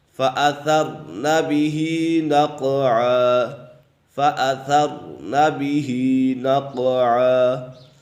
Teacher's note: یہاں پر را پر ہے کیونکہ را ساکن سے پہلے زبر ہے تو اسی وجہ سے را پر ہے۔